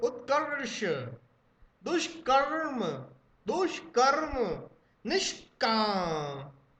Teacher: इन सबको बोलते समय जीभ झटके से ऊपर जा रही होगी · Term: मूर्धन्य शाह